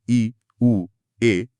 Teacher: निरनुनासिक, जहां हवा केवल मुंह से निकलती है, नाक का कोई काम नहीं होता